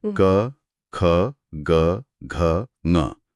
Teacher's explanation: आप बोलकर महसूस कर सकती हैं, आवाज सीधे गले से आ रही है। हाँ बिल्कुल, क, ख सीधे कंठ से।